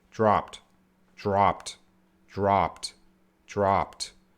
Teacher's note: P sound has no voice there's no vibration